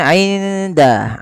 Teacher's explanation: nun sukun ketemu dengan huruf Dal itu harus disamarkan kepada makhraj daripada huruf dal dan hurufnya makhrajnya adalah ujung lidah kita bertemu dengan pangkal antara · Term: ikhfa